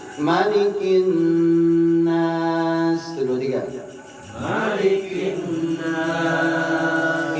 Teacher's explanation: Malik di An-Nas pendek, nggak ada lagi Malik di surat An-Nas dibaca panjang.